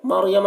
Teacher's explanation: میم مشدد ہے، یہاں پر میم میں بھی غنہ کریں گے. مریم را کو پر پڑھیں گے، رائے ساکنہ سے پہلے زبر ہے.